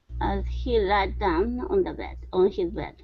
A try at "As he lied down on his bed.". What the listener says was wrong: Okay, all right, nice job. Much better job with the L sound.